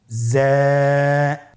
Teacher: যা উচ্চারণ করার সময় অবশ্যই এক আলিফ টেনে পড়তে হবে এক আলিফ টেনে পড়তে হবে হরফটি বারিক হরফ এজন্য পাতলা করে উচ্চারণ করতে হবে হরফটির মাখরাজ আপনারা দেখতে পাচ্ছেন জিহ্বার আগা সামনের নিচের দুই দাঁতের পেট ও আগার সঙ্গে লাগিয়ে উচ্চারিত হয়।